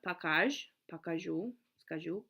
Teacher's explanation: skazat has a consonant mutation. The z goes to a zh, so the stem is skaj